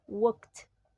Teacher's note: la ED o D, van a sonar como T